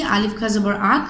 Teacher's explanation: here the sound is stopped at the larynx to pronounce the letter. So the makhraj of the letter kha is the larynx.